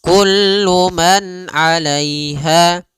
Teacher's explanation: Pada lafal kullu man di sini ada izhar halqi, yaitu suara nunnya dibaca dengan jelas ketika bertemu dengan huruf ain. Maka kita namakan dengan bacaan izhar, ya, izhar halqi.